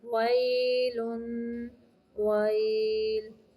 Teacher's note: واو زبر یا، وئی، لام دو پیش لن، ویلن، ویل. واو کی ادائیگی کے وقت ہونٹوں کو گول کرنا ہے، دانتوں کا استعمال نہیں کرنا